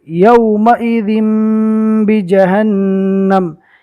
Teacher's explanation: یہاں پر تنوین کو میم سے بدل کر گننا کے ساتھ پڑھنا ہے. یومئذ بجہنم یومئذ نہیں پڑھنا. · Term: اقلاب